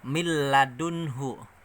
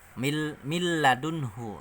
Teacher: Jadi nunnya ini masuk langsung ke lam. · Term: idgham bila guna